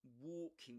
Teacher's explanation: We say walking in British English. Walking with a long O sound.